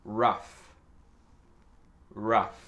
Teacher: Donc, le F, c'est à la fin, le son F, rough. Et le OU, c'est un son E.